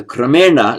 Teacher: the dental n becomes retroflex n, because there's r here, and the intervening m does not block the n becoming a cerebral or retroflex.